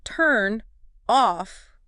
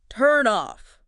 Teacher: the consonant sound basically jumps over and kind of kickstarts the vowel sound in the next word. It bridges the gap. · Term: Linking